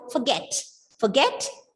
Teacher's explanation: it's a verb with two syllables. You are stressing on the second syllable, forget.